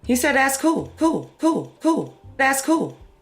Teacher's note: L vocalization, so that's an L turning into a vowel in a word like pool or pull, might sound something like pool or pull.